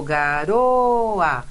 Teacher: O O não tem som de U, não é garua. Então, a gente tem aí uma vogal mesmo.